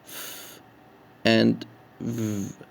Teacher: labiodental, placing the lower lip against the upper front teeth to produce sounds like f and v